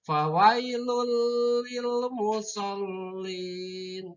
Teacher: Tanwin itu tanwinnya dimasukkan ke lam, maka disebut dengan idgham bila gunah.